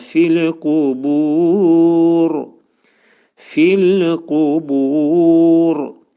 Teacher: Kəsrə ilə ra oxunanda incə oxunur, amma sükun gəldikdə oxunur nə? Qalın şəkildə oxulacaq.